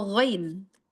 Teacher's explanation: Ghain, yaitu al-halq, yaitu tenggorok paling atas, bagian atas. Adenal ya, adenal halqi ya.